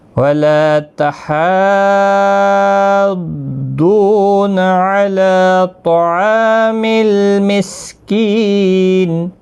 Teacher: وَلَا تَحَاضُّونَ عَلَى طَعَامِ الْمِسْكِينِ، مد لازم ہے، 5 الف کی مقدار کے برابر کھینچ کر پڑھیں گے۔ ضاد مستعلیہ ہے، پور پڑھا جائے گا، واو مدہ بھی ہے، 1 الف کی مقدار کے برابر کھینچ کر بھی پڑھیں گے۔